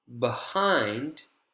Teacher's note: we can hear long we can hear clear we have a higher pitch this is the stress syllable in the focus word behind